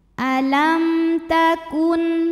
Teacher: karena ada mim sukun yang di hadapannya bukan huruf mim, bukan huruf ba. Di sini hurufnya ta. Maka mim dibaca dengan jelas. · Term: izhar syafawi